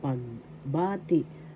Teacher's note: The second syllable has the accent pagbati, that means greetings.